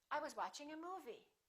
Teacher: that's your first thought group the focus word would be movie